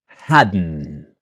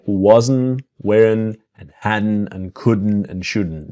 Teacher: Now, our pronunciation part is had not to hadn't and to hadn't. So the same N of wasn't, weren't, hadn't. The T is silent